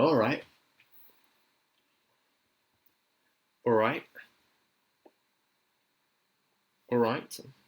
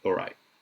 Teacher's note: So there's a glottal stop T at the end there.